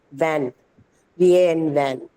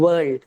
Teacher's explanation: So one's labio dental, the other is bilabial.